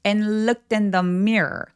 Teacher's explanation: 접속사 and의 뒤발음은 발음 잘 안 합니다. and looked 이렇게 바로 연결하시면 돼요.